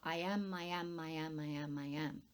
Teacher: the I of the iamb is stressed and the am is unstressed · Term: iambic pentameter